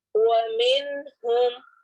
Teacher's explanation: نون ساکن کے بعد ہا ہے تو یہاں پر اظہار ہوگا